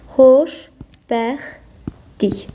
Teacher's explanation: Uşaqlar elə bilir ki, burdakı t d-ya keçib. Xeyr, T D-ya keçməyib. T düşüb. D-ya keçən səs L-dır.